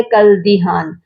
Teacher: کَالدِّہَانِ، یہاں آپ دیکھیے کاف کے ساتھ آپ کو الف بھی نظر آ رہا ہے، لام بھی نظر آ رہا ہے، تو یہاں الف اور لام کو ہم نہیں پڑھیں گے